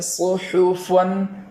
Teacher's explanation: صاد ادا ہو جائے گا، اور اس کے بعد والا حرف ہا کو اس طریقے سے ادا کریں گے کہ وہ چشمے والی ہا کی طرح ادا نہ ہو جائے، اور نرم آواز نکالیں گے